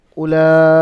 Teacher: তিন থেকে চার আলিফ পরিমাণ টান দিয়ে পড়তে হবে